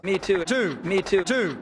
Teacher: travolta's fleece and goose vowels the vowel sounds in words like me and two just don't sound southern at all